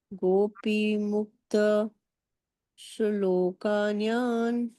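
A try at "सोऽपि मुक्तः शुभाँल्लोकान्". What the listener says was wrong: गोपी नहीं है यहाँ पे, सो अपि मुक्तः शुभां लोकान्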